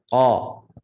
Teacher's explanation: Qa makhrajnya pangkal lidah sentuh pada langit lembut berdekatan dengan anak tekak dalam sedikit. Qa. Qaf ini jangan berangin.